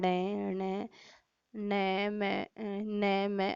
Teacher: इन ध्वनियों के उच्चारण में वायु नाक से निकलती है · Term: नासिकीय ध्वनियां